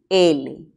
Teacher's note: este se llama sonido lateral verdad luego decimos que es alveolar y también es sonoro